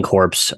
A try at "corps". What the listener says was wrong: Not You said corpse. We're talking core.